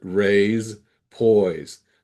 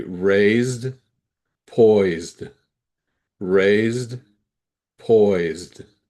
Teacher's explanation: verbs that end with se have a z sound, not an s sound